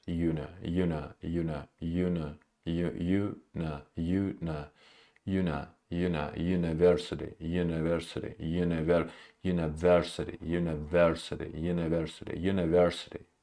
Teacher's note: the first two syllables are unstressed